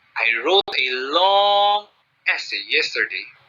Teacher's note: i extend the duration of uttering the word long to emphasize that the essay that i made or that i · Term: increase the duration